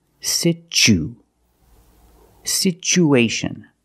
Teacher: so the second syllable is the long u like Boot and moon situ situation we have two vowels together the U